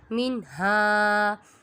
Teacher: اور ہا کے اوپر الف مدہ کا قاعدہ ہو رہا ہے کیونکہ الف سے پہلے زبر آ رہا ہے، اس کو ایک الف یعنی 2 حرکات کے برابر کھینچ کر پڑھیں گے